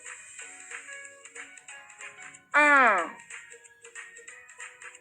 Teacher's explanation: चंद्र बिंदु को बोलते वक्त आपका मुंह भी खुल जाता है और नाक से भी ध्वनि निकलती है। · चंद्र बिंदु को अनुनासिक भी कहते हैं, क्योंकि इसका उच्चारण करते समय नाक और मुंह दोनों में से ध्वनि निकलती है।